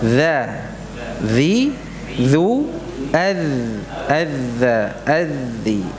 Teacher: Kalau dal yang tidak ada titiknya, ya, dal muhmalah, ya, itu tertahan suaranya. Sedangkan dzal, ya, dzal mu'jamah yang ada titiknya ini apa? Rikhwah, mengalir suaranya.